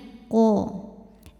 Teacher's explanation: O tebal, pangkal lidah naik